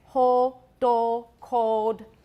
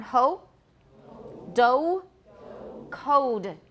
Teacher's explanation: Then there's a vowel that we're going to talk now about the vowel in ho, do, code. In American English, it's close to O, but it is a diphthong. It's not just O. If it were a monophthong, it would sound funny to my ears.